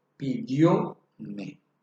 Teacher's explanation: Pero al cambiar el orden, es decir, cuando utilizamos el pronombre en forma enclítica o enclítico del pronombre, ahí desaparece la tilde porque se convierte en una palabra llana o grave. La fuerza de la voz recae en dio